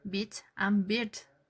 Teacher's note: The difference is the length of the vowel. In this case we have only one diacritic in the first case, in bit, because it's short, only bit.